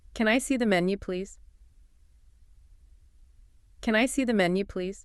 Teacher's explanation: And there's that rising tone again, that upward inflection signals it's a question